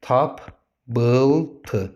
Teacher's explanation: Qoşa P olanda da birinci P olduğu kimi, ikinci P B-ya çevrildi.